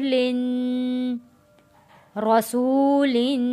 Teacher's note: دو زیر پہ ہم نے غنہ کرنا ہے، تنوین ہے